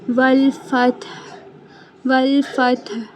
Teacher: ہا حلق کے درمیان سے ادا ہوگا۔ ہا کی آواز واضح رکھنی ہے، پتہ چلنا چاہیے کہ ہم وقف کر رہے ہیں تو آخر میں ہا کے ساؤنڈ نکال رہے ہیں، ٹھیک ہے۔